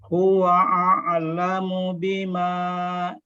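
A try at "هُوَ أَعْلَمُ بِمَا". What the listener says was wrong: Ayo, belum teralirkan itu huruf ainnya. Ya, dilatih lagi ya.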